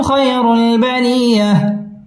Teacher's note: খয় জবরের বাম পাশে জজম ওয়ালা ইয়া লিনের হরফ তাড়াতাড়ি পড়তে হবে